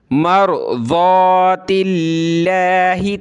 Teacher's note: لفظ اللہ کا رول آپ کو ہر ویڈیو میں بتاتا ہوں کہ لفظ اللہ سے پہلے زیر آ جائے، جیسے کہ تا پر زیر ہے کسرہ، تو لفظ اللہ کو ہم نے باریک کر کے پتلا کر کے پڑھنا ہے